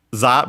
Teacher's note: Japanese doesn't have the V sound, so it becomes the closest one, which is Z.